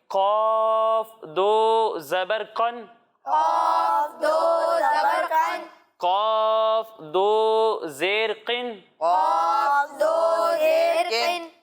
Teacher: تو اس کے بارے میں یہ ہے کہ تنوین کی ادائیگی نون ساکن کی طرح ہوتی ہے، یعنی جب ہم تنوین والے حرف کو پڑھیں گے تو اس کے ساتھ نون ساکن کی بھی آواز آئے گی، یعنی اسے پڑھیں گے قاف دو زبر قن، قاف دو زبر قن، قاف دو زیر قن، قاف دو زیر قن، قاف دو پیش قن۔